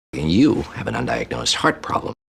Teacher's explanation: You have an undiagnosed heart problem. And that he really brings out heart and prob. He really stresses those, the most important part of the sentence for him